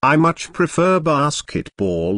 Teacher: notice how much is stressed to show that the speaker really likes basketball